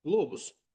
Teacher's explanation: Qlobus birinci hecaya düşür.